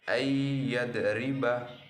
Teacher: Nun mati bertemu dengan huruf ya, maka dibaca dengan lebur tanpa dengung